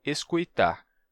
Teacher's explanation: Auscultare nos deu escuitar, com a vocalização do L em I